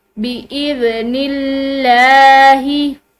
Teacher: نزلہ علی قلبک، قلبک بإذن اللہ، ذال یہ نرم حروف میں سے ہے، ٹھیک ہے، اس کو نرمی سے پڑھیں گے۔ بإذن اللہ، اب یہ لفظ اللہ کی لام جو ہے یہ موٹی نہیں بلکہ باریک، جیسے نارمل ہم لام پڑھتے ہیں اسی طرح پڑھی جا رہی ہے، کیونکہ اس کے پیچھے جو ہے یعنی کہ یہ نون جو ہے اس پہ زیر ہے، تو اس کی وجہ سے لفظ اللہ کی لام باریک پڑھی جائے گی۔